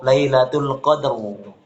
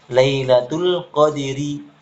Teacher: Tapi kalau diwasolkan karena dia kasroh, maka tipiskan rohnya. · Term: roh tarqiq